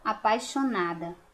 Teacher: o I é chamado de semivogal, por quê? Porque quando a gente fala, ele quase não aparece